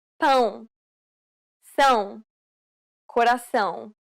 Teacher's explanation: It is similar to the ow sound in English, but with nasality. Saying the word pound repeatedly may sometimes help with pronouncing this sound.